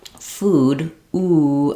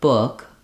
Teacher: my tongue is a little bit lower and my lips are not as pursed. They're still rounded when I say book, but they're not very pursed and tense.